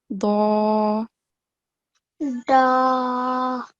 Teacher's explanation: the sides of the tongue are touching the gums, and the tongue is raised as well.